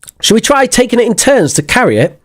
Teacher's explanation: notice that the modal verb is not stressed and the pronoun is not stressed and the prepositions are not stressed in and to are not stressed we try taking it in